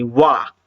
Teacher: आपके होठ भी घूम रहे हैं और दांत के पास जबान भी जा रही, वा, है ना, तो ये क्या हो जाएगा, दंत और ओष्ठ हो जाएगा, वकारस्य दंतोष्ठम बोलते हैं।